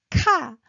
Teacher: So you can feel a burst of air and rising as well